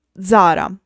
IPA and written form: ˈʣara (Zara)